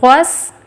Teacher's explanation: سین پہ تشدید ہے تو غین کو سین سے ملائے، غس، سیٹی والی آواز آئی، پھر سا خود سے پڑھنا ہے، سا قو، سا اور قو دونوں کی آواز کو اوپر اٹھانا، وغساقا الا حمیما وغساقا۔